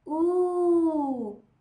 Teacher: Đối với lại âm U dài thì khẩu hình miệng của chúng ta vẫn tròn nhưng thực sự môi của chúng ta sẽ chu hẳn ra về phía trước.